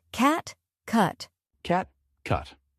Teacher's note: In cat, the A is more open, while in cut, the U is shorter.